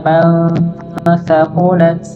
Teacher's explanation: dibaca samar, nun mati bertemu dengan huruf sa